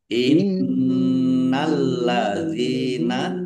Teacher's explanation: Innalladzina nun tasdid dibaca gunnah atau mendengung, ya, ditahan biar tampak mendengungnya.